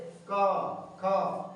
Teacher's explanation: हर वर्ग का पहला और दूसरा व्यंजन देख लीजिए, पहला और दूसरा व्यंजन जैसे क और ख, इसमें उच्चारण करेंगे तो स्वर तंत्रियों में ध्वनि का कंपन नहीं होगा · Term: अघोष